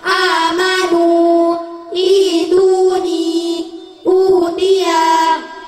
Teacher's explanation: Mad badal setiap a, i, u yang dibaca panjangnya 1 alif atau 2 harokat.